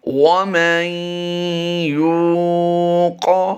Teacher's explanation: قاف کی ادائیگی ہم نے آخر میں پور کرنی ہے